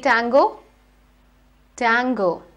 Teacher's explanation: you need to place the tip of your tongue on your teeth ridge just where the ridge starts you know that Junction where your teeth end and the ridge